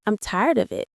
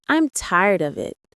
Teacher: with of sounding almost like uh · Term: weak forms